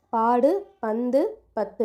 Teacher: உ அப்படின்ற எழுத்து வந்து அதோட ஒரு மாத்திரை அளவுல இருந்து அரை மாத்திரை அளவா குறைஞ்சு ஒலிக்கும் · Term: குற்றியல் உகரம்